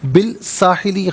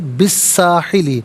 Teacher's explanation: تو یہاں سین کی آواز ہوگی، لام کی آواز ادا نہیں کی جائے گی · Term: حرف شمسیہ